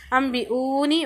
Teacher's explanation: नून साकिन के बाद अगर बा आ जाए तो नून की आवाज़ को मीम में बदल देंगे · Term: इख़लाब